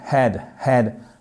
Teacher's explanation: Le H, il est expiré, comme si vous faisiez un peu la buée sur une vitre.